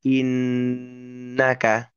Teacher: Selain karena huruf nun-nya sendiri memang huruf hidung mendengung ya. Mendengungnya itu mendengung suara masuk hidung jelas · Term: ghunah